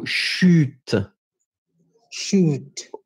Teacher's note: Try to insist on the « u ». Try to make it a bit narrow.